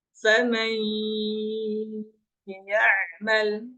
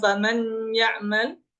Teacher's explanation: Nunnya sudah tidak dianggap. Nunnya sudah tidak ada kecuali menyisakan sifat saja. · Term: idgham bi gunnah